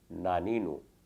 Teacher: نون کا مخرج ہے زبان کی گولائی جب اوپر کے دانتوں کے مسوڑوں میں لگے، یعنی ثنایا، ربائی، انیاب یہ نکیلے دانتوں تک پھیل کر لگے تو نون ادا ہوتا ہے۔ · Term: طرفیہ